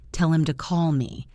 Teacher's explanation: Note that to becomes duh or tuh. · This dropping of the H makes the sentence fly by much faster. If you are waiting for the H sound, you will miss the pronoun entirely.